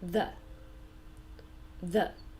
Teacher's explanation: my tongue touches and I can feel a little vibration a little movement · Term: th sound